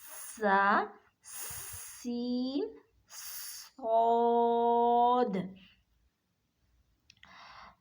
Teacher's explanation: اب یہ یہاں پہ بھی آپ شیپ دیکھ سکتے ہیں کہ اس طرح سے دونوں جو اوپر والے دانت سامنے والے دو اور نیچے والے دو سامنے والے دانت آپس میں اس طرح سے ملے اور اندر سے زبان کی نوک نیچے والے دو دانتوں کے کناروں کے ساتھ لگے، تو یہ تینوں حروف ادا ہوتے ہیں